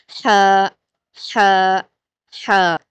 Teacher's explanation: اور ہم ہا کو باریک پڑھ رہے ہیں تو اس کو پڑھتے ہوئے آپ کے ہونٹ پھیلے رہیں گے